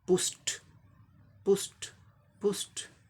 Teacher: अब इसका उच्चारण फोनेमिक ट्रांसक्रिप्शन, पी का प साउंड हो गया, यू का सॉफ्ट ऊ साउंड, जैसे हर्ष ऊ कहते हैं, हिंदी में सॉफ्ट होता है ऊ, पू, ये स, तालब सा, मोटा सा, श, पुश हो गया। अब स उच्चारण वॉइसलेस है, इसलिए ईडी का उच्चारण, ये इन्फ्लेक्शन का उच्चारण, पास्ट पार्टिसिपल इन्फ्लेक्शन का उच्चारण क्या हो जाएगा, ट, पुस्ट, पुस्ट, पुस्ट।